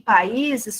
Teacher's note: O I separa do A, forma um hiato.